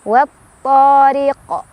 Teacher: Jadi awalnya si qaf itu ya, huruf qalqalahnya awalnya enggak sukun karena berhenti jadi disukunkan ya. Maka cara baca dari qalqalah kubra adalah dipantulkan. Pantulannya besar ya, lebih berkumandang.